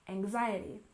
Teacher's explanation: And anxiety, we stress the second syllable, anxiety, anxiety.